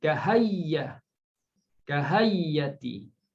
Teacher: Kahai'ati jadi kahayyah, kahayyati. Okey, dia tukarkan hamzah tu menjadi huruf ya, kemudian menjadi double ya, kemudian dia idgham.